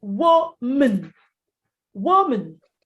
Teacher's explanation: Well, the rule in English is this. When you have M-A-N in a word as a second syllable, and you're not stressing it, it's not the main focus when you're pronouncing the word, you don't go man, you go mun, mun. So it's woman, woman.